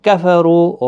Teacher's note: کفروا رو پیش کی وجہ سے پر پڑا جائے گا، رو واو مدہ بھی ہے، ایک الف کی مقدار کے برابر کھینچ کر بھی پڑھنا ہے۔